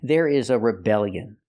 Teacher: With the word rebellion, we put the stress on the second syllable.